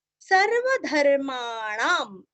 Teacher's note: णा के ऊपर अनुस्वार का उच्चारण आधा म